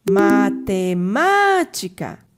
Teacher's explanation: eu destaquei a sílaba mais forte, que é o ma, e ela está na antepenúltima posição.